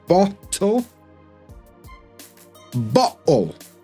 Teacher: We also drop the T sound when it's between two vowel sounds. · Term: glottal stop